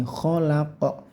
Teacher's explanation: Terus ini namanya qalqalah kubra. Kho-nya kasih suara yang kasar ya, atau mendengkur atau ngorok gitu ya · qaf ini juga dipantulkan ya, tapi mantulnya hati-hati bukan khalaq tapi khalaq gitu ya.